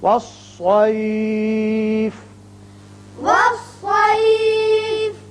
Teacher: یہاں آیت ختم ہوتی ہے، فا ساکن ہو جائے گا